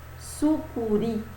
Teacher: a sílaba mais forte dessas palavras é a última sílaba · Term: oxítonas